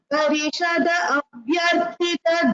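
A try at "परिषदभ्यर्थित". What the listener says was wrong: Bhagini, it is Parishad Abhyarthita. We don't split that word.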